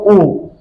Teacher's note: तो हमारा ओष्ठ जो है वृत्ताकार शेप ले लेते हैं, मतलब गोल वाली शेप ले लेते हैं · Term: वृत्ताकार स्वर